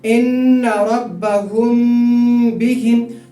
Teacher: میم ساکن کی آواز کو ناک میں تھوڑی دیر رکائیں گے، تو اسی کو اخفاء کہتے ہیں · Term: اخفاء شفوی